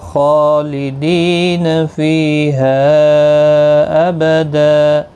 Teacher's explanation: خا کے اوپر کھڑی زبر ہے، ایک الف کی مقدار کے برابر کھینچیں گے، مستعلیہ بھی ہے، پر پڑھا جائے گا